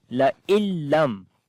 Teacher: La illam, if after the noon sakin, if the next letter is lam or ra, so we do not read noon sound there. We only read lam directly. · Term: idgham without ghunna